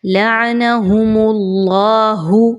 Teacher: ہم اللہ، اب اس میں اللہ کا حرف ہے اور اس سے پہلے والے حرف کے اوپر یعنی میم کے اوپر پیش ہے، اوپر حرکت ہے، تو پیش کی حرکت آ گئی تو آپ نے اللہ کے حرف کو پر پڑھنا ہے، باریک نہیں پڑھنا۔ لعنہم اللہ، منہ کو اچھے سے گول کر کے اور موٹا کر کے پڑھنا ہے۔